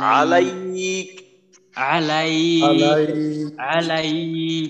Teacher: আলাইক বলার সময় কিন্তু আইনটা একটু লম্বা হইতেছে, লম্বা করা যাবে না।